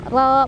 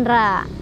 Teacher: Ro-nya dia dibaca secara tafkhim atau tebal karena ro-nya berbaris fathah ya di atas.